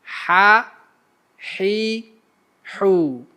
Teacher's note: Huruf ha ni dihasilkan daripada pertengahan tekak dengan mengetatkan rongga anginnya. Ia berkongsi makhraj dengan huruf ain.